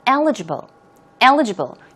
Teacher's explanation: stress goes right there on the first syllable